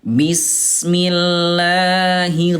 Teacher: pertengahan antara terlalu bergetar dengan huruf rnya hilang tengah-tengahnya